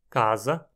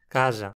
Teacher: hoje pronunciarmos esse som de S intervocálico dessa forma laminar, casa, a pronúncia original em português era apical